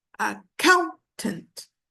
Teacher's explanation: accountant the stress is on the second syllable